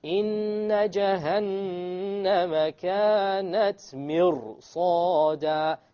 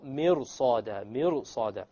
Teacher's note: And sad is of the letters of isti'la, the heavy letters. Therefore, this ra will become heavy.